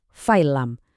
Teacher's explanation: Jadinya fa'il lam. Seolah-olah huruf lamnya jadi double atau bertasydid. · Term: idgham bila gunnah